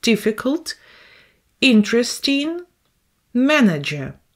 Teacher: the first syllable is under the stress